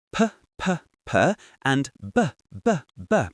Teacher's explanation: You can feel your lips completely closing, building up that pressure, and then pop, the air comes out. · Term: stop consonant